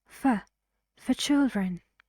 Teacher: R is not pronounced because it's British English